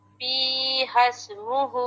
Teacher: آپ سین کی جو ادائیگی ہے نا وہ مکمل نہیں کر رہی. اس میں ہے ہمس، سانس ہے. اگر آپ پڑھتی ہیں ہسمہ تو ٹھیک ہو جائے گا.